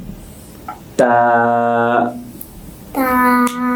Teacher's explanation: জিহ্বার সামনের অংশ উপরের দাঁতের গোড়ার সাথে মিশে উচ্চারণ হবে